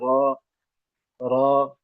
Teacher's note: जबान के ऊपरी हिस्सा दांतों की जड़ के पास तालू से मिलकर र अदा होती है